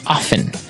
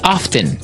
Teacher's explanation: time now with pronunciation some people like to pronounce often right they kind of leave out the strong T sound while other people say often both forms are correct right yes